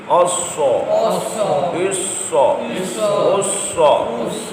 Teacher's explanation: سیٹی والے حروف میں اسا اسا عصا عصا عصا عصا اور صاد حروف صفیریہ میں بھی شامل ہے حروف مستعلیہ میں بھی ہے سیٹی بھی ادا کریں گے اس کو پر بھی پڑھیں گے